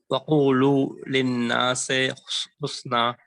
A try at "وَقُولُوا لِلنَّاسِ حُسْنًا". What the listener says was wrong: lin nasi. Nase becomes majhul and it's not read the right way. Nase is wrong. Nasi. Lin nasi. Nasi. Yeah, you said nase. So it becomes majhul, and majhul is not the correct way to read.